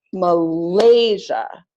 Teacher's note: has three syllables so I'm going to clap it as Malaysia second syllable is longer and louder the unstressed syllables are shorter and faster